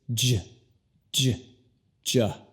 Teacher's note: La J en inglés se pronuncia primero con una D y luego J.